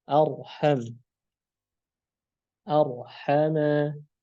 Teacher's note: ketika huruf ra sukun sebelumnya fathah. Contohnya adalah arham. Arhama. Ra-nya tebal.